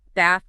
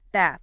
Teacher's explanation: The classic difference, right? British English often uses a longer a bath. American English typically uses a shorter a bath. Again, neither is right or wrong.